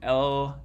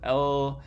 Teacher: air can pass out through the sides of the mouth um while being blocked down the middle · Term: lateral